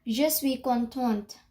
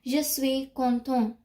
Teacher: When there is an e, you pronounce the last word. Like if there is an e at the end, you pronounce the t.